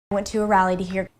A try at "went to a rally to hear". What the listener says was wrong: It's definitely not tu, tu, tu. There's no true T, and there's no U vowel. It's more of a flap T, and then the vowel is the schwa, rallied.